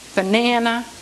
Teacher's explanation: the accent is on the na, banana, okay?